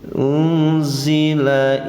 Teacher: nun mati bertemu z dinamakan ikhfa, ikhfanya ikhfa ausat pertengahan